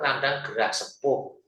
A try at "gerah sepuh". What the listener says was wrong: Itu masih masih dibaca ke gerah sepah gitu.